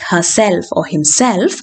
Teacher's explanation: in words like herself or himself again the self part is stressed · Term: word stress